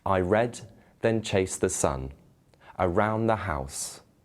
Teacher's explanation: five sets of unstressed syllables followed by stressed syllables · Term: iambic pentameter